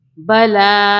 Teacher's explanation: لام الف زبر لا ہوتا ہے، لیکن بڑی مد کی وجہ سے 3 الف کے برابر کھینچیں گے